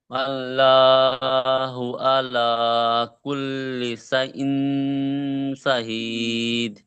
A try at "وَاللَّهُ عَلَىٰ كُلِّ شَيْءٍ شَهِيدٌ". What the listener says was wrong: তা ইন নয়, শিন ইয়া জবর শাই, শাইয়্যিন শাহীদ।